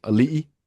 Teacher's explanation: there's a lot of words that have the glottal stop, like ali'i, that they don't write, but it's there